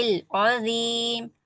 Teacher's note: عظیم ذو کو موٹا پڑھیں گے